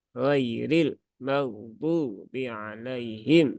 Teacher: sifat gunahnya mim hilang sifat tawasudnya pun juga juga hilang